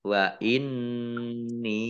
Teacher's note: wa inni nun tasdid dibaca gunah atau mendengung ditahan 2 harokat